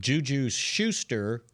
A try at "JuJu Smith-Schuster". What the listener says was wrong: Don't forget the Smith. Juju Smith-Schuster. You don't say Kareem Jabbar, do you?